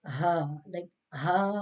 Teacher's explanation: this is pronounced from the bottom part of the throat